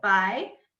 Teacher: So in my name, the first tone is rising. So it's the second tone where I go Bai.